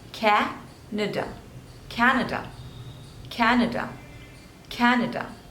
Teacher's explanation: So three syllables and stress is on the first one,